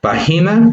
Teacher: De estas 3 sílabas, vemos que la mayor fuerza de voz queda en pa, porque decimos pa, y en este caso esta tiene un acento gráfico, porque ahí podemos ver cómo pa tiene la rayita que nos está indicando justamente esa entonación, esa mayor entonación.